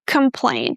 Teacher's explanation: Make sure you stress the second syllable really well. That is going to be easier for you to reduce the vowel in the first syllable.